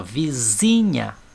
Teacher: o zi é falado com mais força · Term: sílaba tônica